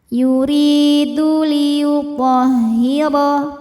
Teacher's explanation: Yuri ri mad thabi'i dzahiri, karena ada ya sukun didahului kasrah, maka huruf ra panjang dua harakat. Yuridu liyuthahira Huruf tha dibunyikan secara tafkhim, karena berbaris fathah, maka dibacanya tebal.